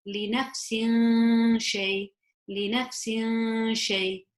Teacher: Sheen is not a throat letter, it's not a yarmalun letter, it's not the ba, which means that it is ikhfa, and I would hide that kasratain sound into the sheen.